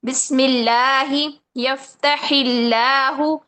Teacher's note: لفظ اللہ یا اللہم سے پہلے زیر ہو تو ان کو باریک پڑھا جائے گا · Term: ترقیق